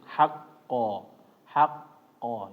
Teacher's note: karena ada tasdidnya ditahan terlebih dahulu ketika masuk